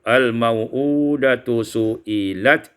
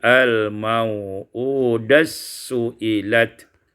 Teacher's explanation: Pada ayat yang ke-8 al-mau'udatu su'ilat idghamut ta' fis sin diidghamkan ta' pada sin menjadi al-mau'udas su'ilat.